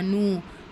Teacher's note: மதுல அஸ்லி இரண்டு ஹரக்கத் அளவு நீட்டம் கொடுத்து ஓதணும். இந்த இடத்துல அலிப் மத்தா ஆ இந்த இடத்துல வாவ் மத்த நனு இரண்டு இரண்டு ஹரக்கத்த அளவு நீட்டம் கொடுக்கணும்.